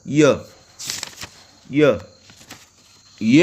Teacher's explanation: Consonant articulated with the body of the tongue raised against the hard palate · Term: palatal